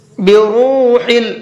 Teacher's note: را کو کھینچ کر کے بھی پڑھیں گے اور پر کر کے بھی پڑھیں گے